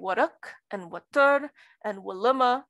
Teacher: So you get waruk and watur and waluma and so forth and so on, which have a stress on the second syllable. Stress is not attracted to wa plus a, meaning that this is likely not a heavy nucleus. · words with initial wa and weak vowels actually get stress on the second syllable, not the first